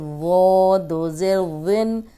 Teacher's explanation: اب یہ موٹا بھی ہے اور نرم بھی، اس میں سیٹی کی آواز نہیں آنی چاہیے۔ اوپر سامنے کے جو 2 دانت ہیں ان کے کنارے پہ زبان رکھیں، وہ موٹا بھی پڑھیں اور نرم بھی